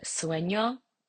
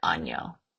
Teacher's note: Uh it's a voiced paladal nasal consonant which is produced by raising the middle or back of your tongue to the hard pallet and then air is going to flow through the nose while you're making this sound